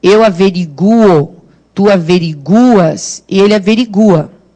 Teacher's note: Nas outras pessoas, primeira, segunda, terceira do singular, em eles, terceira do plural, é o U que é forte. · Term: U é forte